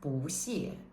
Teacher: Notice here that the character 不, so you can see in the note that in the vocabulary, in the new words list, the character 不 is noted as the fourth tone, 不, which means no or not. But when it goes with another fourth tone, 谢, it changes to the second tone.